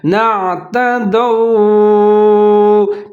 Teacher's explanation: آ گیا ہے، نعتدوا، دال زبر کے بعد واو ساکن ہے، یہ واو لین ہے تو یہاں پر آپ نے اس کو مجہول کر کے نہیں پڑھنا، ہونٹ گول کر لینے ہیں